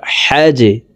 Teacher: এই জিম হরফকে নিচের দিকে ধাবিত করে ধাক্কা দিয়ে উচ্চারণ করব